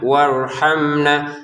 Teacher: di sini mim sukun bertemu nun baca dengan jelas ya